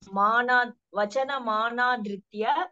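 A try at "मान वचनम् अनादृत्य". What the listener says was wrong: மானால இல்லம்மா, மனா வச்சனம் அனாதிருத்திய தான். மாக பக்கத்து துணைக்கால் இருக்கானா?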